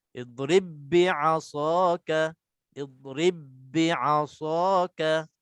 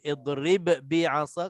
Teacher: Tak boleh idrib bi'asa, qalqalah dah tak ada. Kita terus masuk dalam ba yang sabdu ni dengan huruf ba satu je. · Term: idgham mutamathilain